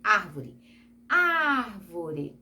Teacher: E proparoxítona, quando você fala, por exemplo, árvore, árvore, é proparoxítona, antepenúltima sílaba mais forte